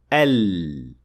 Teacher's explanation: the breath or air will escape from around the tongue so from both sides an air passing through like that produces the sound of Lem